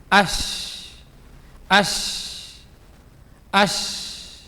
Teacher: മധ്യം മേലെ എണ്ണാക്കിലേക്ക് അതിന്റെ പിക്ചർ നോക്കിയേ അല്ലേ ഇനി ഷീൻ ആണ് ഷീൻ ഷീൻ എന്ന് പറയുമ്പോൾ നാവിന്റെ മധ്യം തന്നെ മേലെ അണ്ണാക്കിലേക്ക് പക്ഷെ ടച്ച് ആവൂല ചെറിയ സ്പേസ് ഉണ്ടാവും അവിടെ അപ്പൊ അതിലൂടെയാണ് ഈ ശബ്ദവും കാറ്റും ഇങ്ങനെ പരക്കുന്നു വരുന്നത്